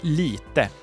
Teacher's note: Lite comes from litet but has lost its T and is now written and pronounced without it